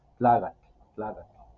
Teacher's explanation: El punto tres es que en otras localidades, eso también se escucha en los en el municipio de Huautla, en el municipio de Huautla no usan la K, en su lugar sustituyen por la G